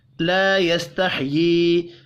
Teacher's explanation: لا يستحيي الف مدہ کو ایک الف کے برابر کھینچ کر پڑھیں گے. یا کے نیچے کھڑی زیر بھی ہے اور چھوٹی مد ہے اوپر، تین الف کے برابر کھینچ کر پڑھیں گے